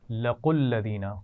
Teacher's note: لَقُوا الَّذِينَ قاف پر جو پیش ہے اسے الَّذِينَ کے لام سے ملائیں گے